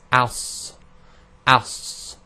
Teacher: heavy letter. plus we have the whistling. So it's as, as, and vowel it would be sa, si, su.